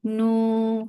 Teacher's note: For Dhamma circular lips, make it 2 counts long.